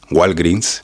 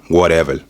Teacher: adding gu to any word that begins with a w